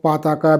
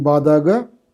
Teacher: Plain voiceless stops became voice stops. So, pataka became badaga.